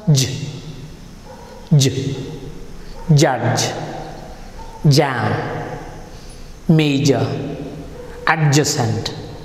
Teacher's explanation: It is a voiced sound, right? It has got vibration, correct?